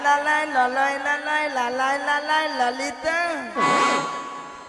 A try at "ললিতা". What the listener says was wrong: নাকি লালাই লালাই ললয় ললয় লালাই লালাই ললিতা? মাসি ওটা লালাই লালাইও নয় আর ললয় ললয়ও নয়, বলো ললিতা।